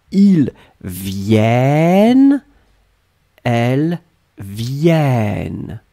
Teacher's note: your double N opens the sound of the E. And the E becomes E.